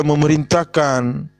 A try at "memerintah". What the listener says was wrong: bukan mentahkan.